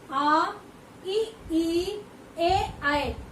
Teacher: कहने का मतलब ये है कि जिन स्वरों के उच्चारण में ओष्ठ गोलाकार ना होकर फैले रहते हैं, यानी कि इन स्वरों के उच्चारण में जो होठ होते हैं वो गोल नहीं होते बल्कि थोड़े से फैले हुए होते हैं। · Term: अवृत्त स्वर